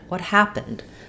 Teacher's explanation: because it's a question with a question word I just fall off like I do for a statement